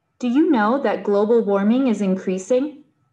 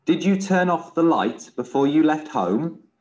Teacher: the speakers all use the raising intonations for yes/no questions